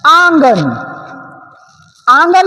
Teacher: आंगन भी क्या हो रही है नाक से भी आ रही है और मुह से